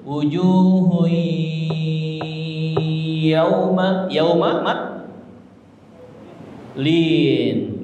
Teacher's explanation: Tapi wujuh masuk ke ya, melebur ke ya, ditahan di hidung. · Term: dengung